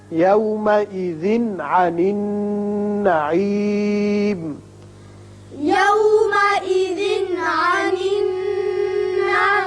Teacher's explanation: یومئذ تنوین کے بعد عین ہے، یہاں اظہار حلقی ہوگا